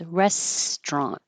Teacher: we get rid of the middle syllable so you won't hear restaurant.